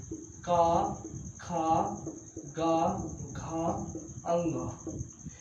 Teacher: कवर्ग, अब कवर्ग क्या होता है, अर्थात का वर्ग के जितने भी वर्ण होते हैं जैसे का, खा, गा, घा, अंग, ये सभी वर्ण कंठ से बोले जाते हैं